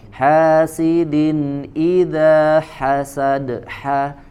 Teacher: ketika bacaan izhar maka tidak ada tambahan eee gunnah ya tidak ada tambahan dengung dibaca langsung ke huruf setelahnya